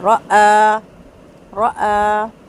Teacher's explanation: ٹھیک ہے، را را کر کے نا حمزہ اور را مکس نہیں ہونا چاہیے، حمزہ کی آواز بالکل تحقیق کے ساتھ شارپ ادا ہوگی